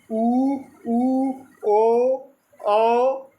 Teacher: वृत्ताकार स्वर वे होते हैं जिनको बोलते समय मुख अपना जो होता है वृत्त के आकार का हो जाए